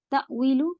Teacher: तअवीलु आवाज कट होगी, ये हमजा है